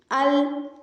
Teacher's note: हमारी ज़ुबान थोड़ा सा ऊपर को उठ के ज़ुबान का सिरा और उसकी साइड्स हैं वो थोड़ी ऊपर वाले दांतों के मसूड़ों से लगेंगी। अल जैसे लाम की अदायगी होती है।